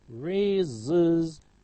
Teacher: Raise ends in a sibilant, so we have is